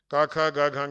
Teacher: And then ka, kha, ga, gha, nga, ka is non-voiced alpa prana, ka is non-voiced mahaprana, ga is voiced alpa prana, then gha is voiced and mahaprana, then ga is anunasika or nasal sound.